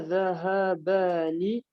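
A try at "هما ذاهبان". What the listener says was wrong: Mais par contre, tu dis, t'as dit dhahabani, c'est dhahibani. Dhahibani.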